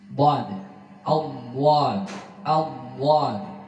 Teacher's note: Dhad ini pengucapannya punya sifat yang satu beda dari huruf-huruf yang lain, namanya al-istital, al-imtidad, jarius sawt inda nutqi bil harf. Jadi suara memanjang mulai dari permulaan lidah hingga penghabisan lidah